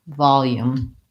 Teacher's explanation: let's first look at the word volume we have first syllable stress in this word